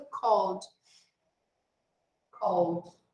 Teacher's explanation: Called. Você vai do L direto pro D. Você não vai pronunciar a letra E. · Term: som de D